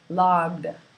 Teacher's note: G is a voice sound, so the ED ending becomes D